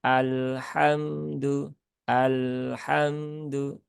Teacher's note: Menghilangkan sifat tawasud dan berubah menjadi rakhawah